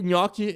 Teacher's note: a gente toca a parte da frente da língua toca o céu da boca tá os lados também